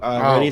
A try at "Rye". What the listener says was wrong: Well, first off, it's Rye, but yes. The D is silent. The D is tucked away in a particular place. You can't hear it.